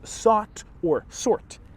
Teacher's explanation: The merger of these two sounds is sometimes known as the thought north merger